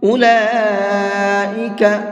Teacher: یہ لام کے اوپر بڑا مد ہے تو اس کو 4 سے 5 الف کی برابر کھینچ کر کے پڑھیں گے